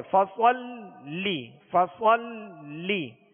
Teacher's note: تشدید ہے، لہذا لام کو دوہرا پڑھیں گے، دو مرتبہ پڑھیں گے۔